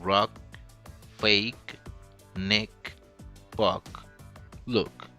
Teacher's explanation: The unreleased allophone, it's just a slightly touch at the end. Almost silence, but not silent.